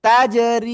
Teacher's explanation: জেরের বামে জমলা ইয়া, মাদের হরফ এক আলিফ টেনে পড়তে হবে। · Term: এক আলিফ মাদ